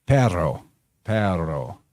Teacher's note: dogs letter this is a Latin term that referred to how the Latin R was trilled to sound like a growling dog · good example of the trilled r is in the Spanish word for dog